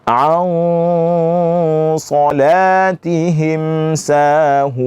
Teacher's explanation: ketika kita bunyikan ikhfanya, itu sudah mulai terdengar sifat tebal yang ada pada huruf shad